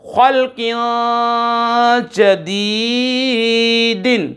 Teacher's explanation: خا قاف حروف مصالیہ میں سے ہے، پر پڑھیں گے، موٹے کر کے پڑھیں گے، اور جدی یا ساکن سے پہلے زیر، یا مدہ کھینچ کر پڑھیں گے، اخفا بھی ہوگا، یا مدہ بھی ہو رہا ہے۔ · دو زیر کی تنوین کے بعد جیم حروف اخفا میں سے آ رہا ہے، غنہ کریں گے، اخفا کر کے یہاں پر پڑھیں گے، ٹھیک ہے۔